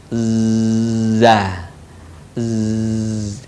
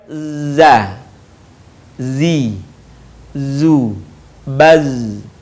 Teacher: Diucapkan dengan mengalir suara tanpa diiringi dengan mengalirnya udara. Sifat lain pada huruf za ini, karakter khasnya dia mirip dengan suara dengungan tawon.